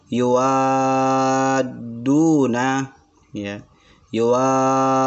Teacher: Kenapa dibaca panjang wa? Karena ada mad lazim kalimil musaqqal.